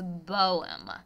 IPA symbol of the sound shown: b